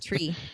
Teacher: you turned the T into a CH sound